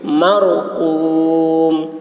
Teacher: میم مشدد غنہ ہوگا میم میں کتاب را پر ہوگی مرقوم قاف کی آواز موٹی ہوگی